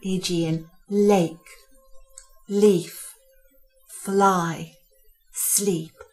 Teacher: tongue tip just touches the front of the gums and the sound passes through the side of the tongue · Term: light sound